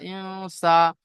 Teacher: নুন সাকিনের আওয়াজকে নাকে তুলে একালি পরিমাণ গুণনা করে পড়তে হবে